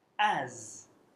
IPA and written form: æz (as)